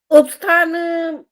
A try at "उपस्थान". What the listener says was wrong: उपस्थान नहीं बोलना होता है, इसको भी उपस्थान बोलना होता है, प भी पूरा बोलना है। उपस्थान बोलना चाहिए, तो वो शुद्ध हो, हिंदी में बोले चाहे संस्कृत शब्द हो, कोई भी हो।